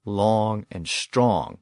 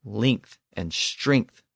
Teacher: the older versions are long and strong with the back vowels. The newer versions are length and strength with the front vowels.